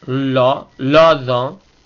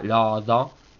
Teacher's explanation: alto y bajo, las dos vocales, la O abierta